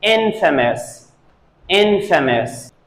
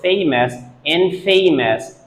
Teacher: infamous Infamous o-u-s at the end is pronounced as Infamous and the stress is on the first syllable